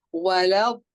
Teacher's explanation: मद्दे लाजिम का मतलब है कि लाजमी मद है, 6 काउंट्स इसको लंबा करेंगे। द्वाद, इसको द्वाद, इसको ज्यादा मोटा मोटा पढ़ेंगे, मतलब कि जुबान हमारे मखरिज पे अच्छी तरीके से लगे, लाम पे आवाज हमारी जम जानी चाहिए।